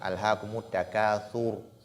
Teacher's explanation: Et la lettre ra, lorsqu'elle porte sukun, elle est emphatique quand elle est précédée de dhamma.